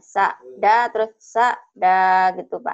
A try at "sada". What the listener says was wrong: Bukan. Bukan. Enggak panjang. Sada. Sada. Sada.